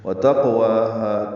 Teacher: تا باریک ہے، قاف پر ہے اور اس پہ قلقلہ ہے